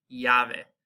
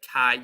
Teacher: our double L sound in Spanish is going to actually make a Y sound. So when you combine two L's back to back, you end up with a similar sound like the Y.